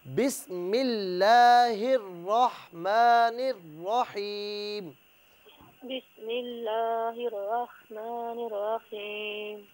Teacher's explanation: اس میں خاص طور پر یہ دھیان رکھیں کہ لفظ اللہ کی ہا کو رحمان کی را کے ساتھ ملائیں